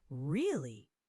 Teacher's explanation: Really, tone falls when confirming something.